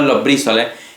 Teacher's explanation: la B, la bilabial, por influencia de la S de los, puede volverse labiodental, los brísoles, y posteriormente perder la sonoridad, los frísoles.